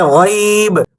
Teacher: غین کو آپ دیکھیں تو آپ کو اس میں قدرتی طور پر ایک بھاری پن محسوس ہوگا۔